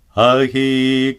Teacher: Sometimes an Anusvara followed by a sibilant is pronounced as ga.